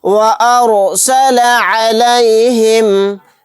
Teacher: أَلَمْ يَجْعَلْ كَيْدَهُمْ فِي تَضْلِيلٍ وَأَرْسَلَ عَلَيْهِمْ، وَأَرْسَلَ عَلَيْهِمْ، یہاں پر رائے ساکنہ کو بھی موٹا یعنی پر پڑھیں گے کیونکہ رائے ساکنہ سے پہلے زبر ہے